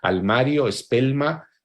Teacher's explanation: el debilitamiento de las líquidas en posición implosiva